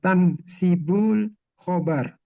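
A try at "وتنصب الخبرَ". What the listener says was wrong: Watan sibul khobaro. Harokat akhir jangan ditinggal. Watan sibul khobaro.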